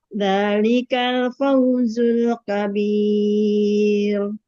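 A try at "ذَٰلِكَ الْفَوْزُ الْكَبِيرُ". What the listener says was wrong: Kabir. Jangan tafkhim, tarkik.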